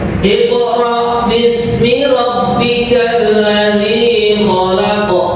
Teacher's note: dari qaf ini termasuk huruf qalqalah, maka membacanya secara memantul gitu.